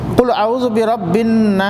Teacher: آخر میں سین ہے، سین میں سیٹی